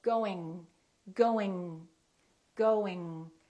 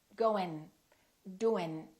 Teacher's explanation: when I pronounce the ng sound the G is in the back